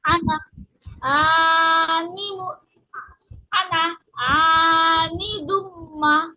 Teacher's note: লাস্টে যে মিমটা আছে মিমের পরে আলিফ আছে তো এজন্য একটু টান হবে